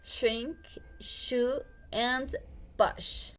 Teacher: The sh sound is voiceless alveopalatal fricative consonant.